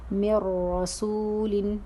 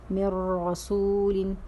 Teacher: نون ساکن کے بعد را آیا ہے تو ہم کیا کر رہے ہیں؟ نون ساکن کی آواز تو را میں مدغم کر رہے ہیں، ملا رہے ہیں، لیکن غنہ نہیں کر رہے ہیں کیونکہ ادغام بلا غنہ کی مثال ہے.